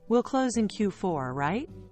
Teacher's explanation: Skip uptalk on statements. Ending with a rise sounds like you're asking for approval.